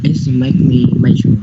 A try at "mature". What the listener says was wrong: I know, but the thing is the way you pronounce the word major. It's not major. It's matured.